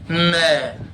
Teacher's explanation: न बोलने के लिए नाक से हवा निकालनी पड़ेगी। बोलकर देख लो बिना नाक से हवा निकाले, न, पहले नाक से हवा निकलेगी तब जाके न बोल पाएंगे।